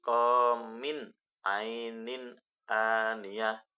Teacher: kasrotain bertemu dengan huruf alif ainin aniah itu izhar dan harus dibaca jelas tanwinnya